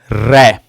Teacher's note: ऐसा व्यंजन जिसको बोलते समय हमारी जीवा पहले दंत मूल मतलब जो दांत होते हैं उनकी जड़ों से और फिर जाकर मसूड़े से टकराए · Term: लुंठित व्यंजन